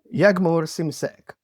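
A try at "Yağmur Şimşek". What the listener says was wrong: The original is without G. It's like a long A. but I also call myself Yagmur in UK because we don't have the silent G here.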